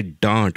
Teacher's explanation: But when you say dant, which is to scold someone, the d and the th, your tongue is curled back, and that is what is called as a retroflex sound.